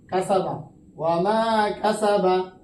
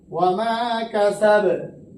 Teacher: বা জবর উচ্চারণ হবে না, বা হবে না, এখানে সাকিন হয়ে যাবে , ওয়া মা কাসাব, কলকলা হয়ে যাবে, ওয়া মা কাসাব, সিন